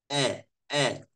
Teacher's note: suara itu langsung tutup kayak ama ah itu makhraj Hamzah sukun kalau Hamzah bilharakat dua pita suara tutup tiba-tiba buka